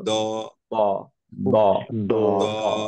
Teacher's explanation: back of the tongue obviously elevated heavy letter যেহেতু